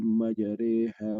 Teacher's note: antara fathah sama kasroh dimiringkan, jadi antara jadi A jadi E gitu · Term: imalah